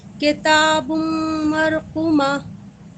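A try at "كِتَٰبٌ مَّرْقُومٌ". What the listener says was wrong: یہاں پہ ادغام کہاں ہوا؟ ہاں اور غنہ بھی کریں گے تھوڑا نا 2 کاؤنٹ. مرقوم.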